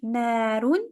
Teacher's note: So na is longer because of the alif.